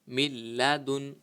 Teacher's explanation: حروف ارملون میں سے لام آیا ہوا ہے، تو اس میں بھی جو ہے وہ ہم غنہ نہیں کریں گے